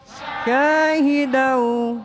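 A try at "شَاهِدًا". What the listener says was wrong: Agak tafasyi itu disembur ya. Nah, di sini tidak boleh dibaca ron. Karena di situ dibaca mad'iw wat. Mad'iw wat. Makanya di sini tidak boleh dibaca tanwin.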